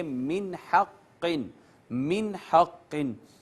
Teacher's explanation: آواز نون پہ نہیں چھپائیں گے، اس کو صرف ظاہر کر کے آگے چلے جائیں گے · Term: اظہار